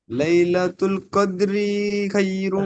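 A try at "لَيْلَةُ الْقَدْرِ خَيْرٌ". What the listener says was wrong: রি, রি টান বেশি হয়ে যাচ্ছে, এখানে এতটা টান হবে না।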